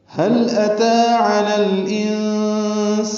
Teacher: تا کے اوپر کھڑا زبر ہونے کی وجہ سے اس کو 2 حرکات لمبا کرنا ہے · حلق سے ادا کریں گے اور لام سے ملا دیں گے۔ لام پہ اظہار ہوتا ہے